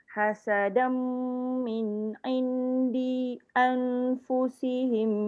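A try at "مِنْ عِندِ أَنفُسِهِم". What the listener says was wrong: Di tu sambung dengan anfusihim. Di tu pendek je.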